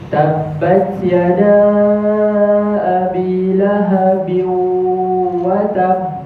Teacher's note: Tutup hidung, buka hidung sama sahaja bunyi dia. Dia tak ada dengung daripada hidung. Jadi bacaan dia kurang tepat. · Dia betul dah tanwin ni masuk ke wau tapi dia tertinggal dengungnya tanwin. Dengung tanwin tu dia tak ada.